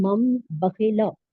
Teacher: اقلاب کے لغوی معنی ہے بدلنا، یعنی نون ساکن یا تنوین کے بعد اگر با متحرک آ جائے تو نون ساکن اور تنوین کی آواز کو میم سے بدل کر اخفا اور غنہ کریں گے